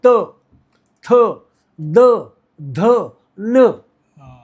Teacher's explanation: दांत को जीभ लगाकर जो शब्द हम निर्माण करते हैं उसे कहते हैं दंत्य स्वर